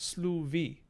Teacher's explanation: it would be pronounced sluvi, because we have allophonic voicing of fricatives in between vowels, just like Old English.